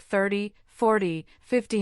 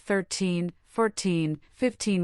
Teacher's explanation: numbers like 30, 40, 50 have a clear T sound at the end, unlike 13, 14, 15 which end with teen